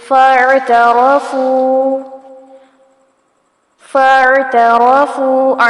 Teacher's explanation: فاعترفوا، فاعترفوا، عین ساکن پر جھٹکا نہیں آنا چاہیے، را کو پر کیا جائے گا، فا پیش واو فو کو کھینچیں گے، مد اصلی بالواو ہو رہی ہے